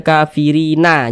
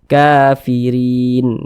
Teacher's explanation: Huruf nun tidak dibaca panjang, berhenti di huruf nun tidak dibaca panjang, maka huruf tersebut kita sukunkan. Sehingga kalau berhenti di huruf nun kita baca kafirin.